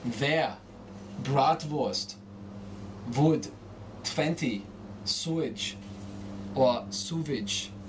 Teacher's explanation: The small act of changing W to V will convince the listener you are German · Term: W becomes V